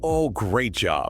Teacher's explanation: I would raise my pitch and say loudly, "Oh, great job." Exactly. Your voice went up on the word great. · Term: bantering sarcasm